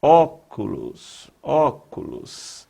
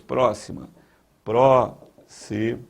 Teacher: É aquela palavra cuja sílaba mais forte é a antepenúltima. Então, ó, última, penúltima, antepenúltima. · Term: proparoxítona